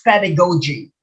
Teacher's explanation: it's pedagogy the accent is on the first syllable